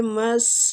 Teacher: سین باریک سیٹی کے ساتھ